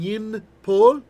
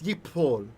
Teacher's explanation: In ancient Hebrew, would have been yin pol, but by the time we get to biblical Hebrew, it's yipol. The noon has assimilated, and there's a strong dagesh. · The noon has assimilated, and there's a strong dagesh. There's a dot in the pei, telling us there are now two peis.